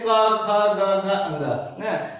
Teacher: यह हमारा जो गला है, जो हमारा जो कंठ है, यहाँ पे ध्वनि को कहीं न कहीं अवरुद्ध किया जाता है, रोकने का प्रयास किया जाता है। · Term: कंठ ध्वनियां